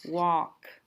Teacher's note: remember we don't hear the l